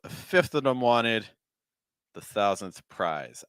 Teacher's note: So I would personally probably stress fifth, and I would stress prize.